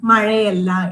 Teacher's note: ഇവിടെ മഴ എന്ന വാക്കിന്റെ അവസാനം ആ എന്ന സ്വരമാണ്. ആ സ്വരവും അല്ല എന്നതിലെ ആദ്യത്തെ ആ എന്ന സ്വരവും തമ്മിൽ ചേർന്ന് മഴയല്ല എന്നാവുന്നു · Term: സ്വരസന്ധി